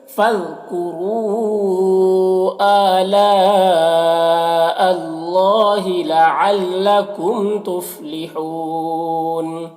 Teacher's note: لعلکم، میم میں اظہار شفوی ہوگا۔ تفلحون، یہاں پر وقف کی صورت میں نون کا زبر سکون سے بدل جائے گا تو مد عارض وقفی ہوگا